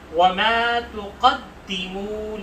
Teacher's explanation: تقدمو میں قاف کو ہم موٹا پڑھیں گے اور دال پر تشدید کی وجہ سے تھوڑا سا رک کر سختی سے پڑھیں گے. لِأَنفُسِكُم، نون ساکن کی وجہ سے یہاں اخفا کریں گے اور ساتھ میں نون ساکن کے بعد جو ہے فا ہے اور اس وجہ سے یہاں نون پر اخفا کیا جا رہا ہے.